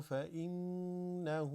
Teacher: This is a noon with a shadda. They're usually all غنة. Kind of the nasal vibration.